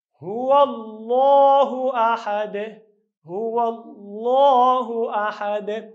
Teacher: نو د الله لام هم چې ویلې په ډک اواز سره او په آخر کې مو قلقله وکړه. قلقله یعنې اواز به زموږ او ستاسو چې کوي په خپل مخرج کې مشابهت د حرکت سره پیدا کوي، چې دا حرکت به نه مشابه زور ته نه مشابه زیر ته او نه مشابه پیښ ته اوسي.